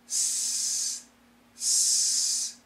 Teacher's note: so the S sound s it's a very clear sound s the tip of the tongue the front part of the tongue touches nothing